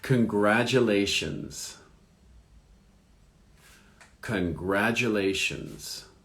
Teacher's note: So the accent is on the second syllable.